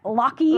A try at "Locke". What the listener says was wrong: it's Locke. The E is silent.